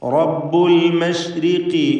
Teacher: ഇവിടെ റായിൽ കസ്റായതുകൊണ്ട് തർക്കീഖാണ് നേർപ്പിക്കുക. ഖാഫിന് കസ്റായതുകൊണ്ട് കുറഞ്ഞ തഫ്ഖീം.